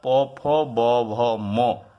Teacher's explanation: उकार पवर्ग अर्थात प फ ब भ म और उपधमानीय विसर्ग का उच्चारण दोनों होठों के टकराने से होता है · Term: ओष्ठ स्थान